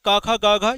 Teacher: हम लोग जब भी बोलेंगे क, ख, ग, घ ये सभी कंठ से।